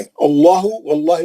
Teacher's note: आवाज को मोटा करके वाव का आवाज नहीं निकालना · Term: तफहीम